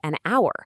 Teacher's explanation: And on the flip side, we say an hour because the h is totally silent. The first sound you actually hear is a vowel.